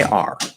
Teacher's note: It's just the R-colored ah vowel, okay? R.